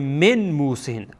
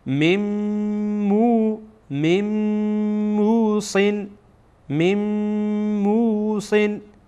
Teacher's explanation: در این میم ما غنه هم میکنیم، یعنی صدا را از بینی بیرون میکنیم